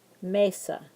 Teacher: like Mesa we're going to stress the first syllable Mesa so you're going to say may a little bit louder than you're going to say sa